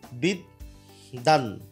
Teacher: বফলার উচ্চারণ না হয়ে দটাই হচ্ছে দ্বিত্ব হয়ে গেল, বিদ্যান এরকম হয়ে গেল আর কি।